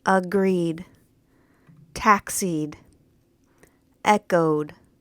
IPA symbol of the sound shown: d